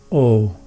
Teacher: This letter is a compound vowel, and in Sanskrit all compound vowels are long vowels, so its sound is held for twice as long as a short vowel.